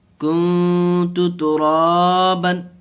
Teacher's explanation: با دو زبر بن، کنت ترابا. را کو کھینچ کے پڑھا اس لیے کہ یہ کھڑا زبر ہے اس کے اوپر، اور کھڑا زبر الف مدہ کے قائم مقام، اس لیے الف کے برابر کھینچ کے پڑھیں گے. · اور یہاں اخفا کا قاعدہ، اس لیے کہ نون ساکن کے بعد حروف اخفا کے 15 حرفوں میں سے تا آیا، اس لیے گنہ کر کے پڑھیں گے ایک الف